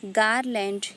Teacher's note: Examples: garland. Here gar is stressed and land is unstressed. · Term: trochaic pattern